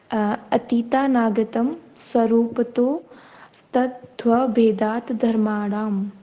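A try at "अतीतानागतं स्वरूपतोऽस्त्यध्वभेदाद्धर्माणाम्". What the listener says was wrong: Good.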